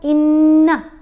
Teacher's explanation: آواز ناک میں جاتی ہے اور ایک حرکت کے برابر ٹھہر کر ادا کیا جاتا ہے غنہ کو